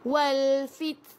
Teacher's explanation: keluarkan angin sedikit saja tuan-puan, jangan sampai keluar sin. Wal fit, kalau tuan-puan rapatkan gigi sangat-sangat, kan, maksudnya rapat sangat, dia akan jadi sin.